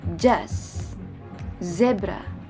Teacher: Konsonan ini tergolong dalam alveolar, frikatif, dan juga voice sound.